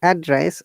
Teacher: when you're saying address our tone is going down we're stressing in the first syllable address when you're using as a verb we're stressing the second